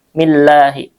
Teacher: Kemudian Allah di sini lafzul jalalah, alif lam syamsiyah dan dibaca tarkik ya, tipis karena sebelumnya kasroh, berharokat kasroh, mi itu kasroh ya, millahi.